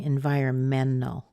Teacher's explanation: hear it it's environmental environmental or I could say environmental but a lot of people are dropping the T